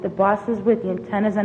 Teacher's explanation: this speaker is saying the word bus in the way that they say boss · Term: northern city shift